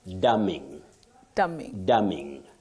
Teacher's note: the N is silent, not pronounced